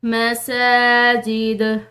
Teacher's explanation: یہ دال جو ہے حروف قلقلہ میں سے ہے، اس کو ہم نے ہلاتے ہوئے چھوڑنا ہے کیونکہ آگے وقف مطلق کی علامت ہے تو ہم نے اس